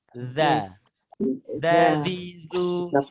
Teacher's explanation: Hujung lidah berjumpa dengan hujung gigi seri atas.